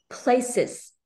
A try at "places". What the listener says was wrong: Không có pờ, không có, âm pờ không có tách ra, không có tách được như vậy, không có tách ra như vậy. Không có places mà là places, liền nhau.